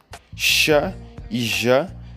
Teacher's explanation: Sh e J são exemplos de consoantes pós-alveolares